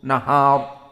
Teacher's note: Jika disambung wan nahari ida, ra ri ru ar muraqqaqah ri ida, nahari ida. Namun jika waqaf hukmunya mufakhamah, karena dia hukumnya sukun dan dilihat sebelumnya fathah. Maka wan nahar mufakhamah, nahar.